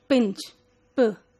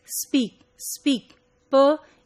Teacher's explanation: because S comes before it, then the P is not coming out with a burst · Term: without any aspiration